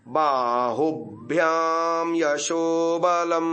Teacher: भ और य का संयोग है तो उ में झटका देना है